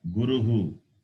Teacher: The word Guru ends with the vowel U. And Visarga to that sound U will be Uhu.